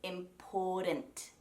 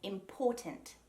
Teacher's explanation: Americans, or North Americans I should say, will usually say important with that soft DT sound